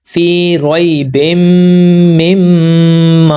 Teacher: यहाँ पर मैंने मीम की आवाज़ को नाक के अंदर रोका है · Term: गुन्ना